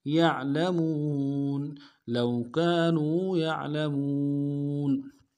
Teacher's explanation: لو كانوا يعلمون یا کو عین کے ساتھ ملانا ہے، عین کو موٹا ادا کریں گے، لام کو نرم سے ادا کریں گے، میم کو واو کے ساتھ ملانا ہے، واو مدہ ایک الف میں کھینچیں گے، نون کو نرم سے ادا کریں گے